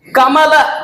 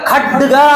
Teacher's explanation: ಈ ಅಲ್ಪ ಪ್ರಾಣಾಕ್ಷರದಲ್ಲಿ ಕಡಿಮೆ ಉಸಿರು ತಗೊಳ್ತೀವಿ, ಮಹಾ ಪ್ರಾಣಾಕ್ಷರದಲ್ಲಿ ಜಾಸ್ತಿ ಉಸಿರು ತಗೊಳ್ತೀವಿ